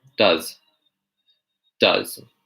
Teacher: It's not really an S sound, it's kind of like a Z sound